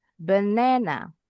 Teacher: Benana suku kata kedua intonasinya lebih tinggi dibacanya sedikit lebih panjang. benana. Kalau dalam IPA symbols di suku kata kedua ini pasti ada tanda apostrofnya.